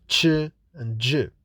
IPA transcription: tʃ, dʒ